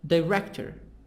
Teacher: director stress in the middle